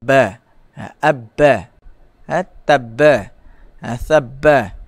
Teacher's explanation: Makhraj huruf ba, ulama mengatakan bahawa cara sebutan huruf ba ialah kita melakukan tekanan yang kuat sedikit apabila membunyikan huruf ba. Jadi pada ba, tekanan pada dua bibir itu menjadi kuat. · Pada huruf ba, dua bibir mesti berlaku tekanan yang kuat.